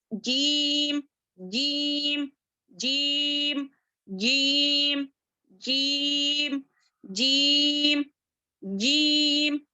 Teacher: जुबान का दरमियानी हिस्सा ऊपर तालु को टच हो रहा है